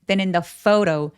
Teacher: phot f로 발음했죠. 오우까지 느껴지게 굉장히 길게 이중 모음 발음해 주시고요